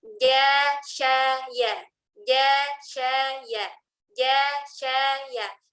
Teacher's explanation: Jadi tengah lidah ditempelkan ke tengah langit-langit atas. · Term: Jim, shin, dan ya